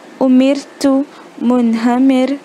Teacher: और अगर रॉ is प्रेसीडेड बाय कसरा, रॉ के पहले अगर कसरा है, ज़ेर है, तो उसको बारीक आवाज़ में पढ़ेंगे